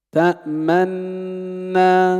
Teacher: لا ترجع شفتيك سريعا، يستمر الضم زمن الغنة. تأمنا. · أن نشير بالضم أثناء نطق النون الأولى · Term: وجه الإشمام, الإشمام